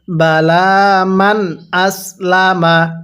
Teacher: নুন সাকিনটা স্পষ্ট করে পড়বো কারণ নুন সাকিনের পরে হামজাটি হলো ইজারে হরফ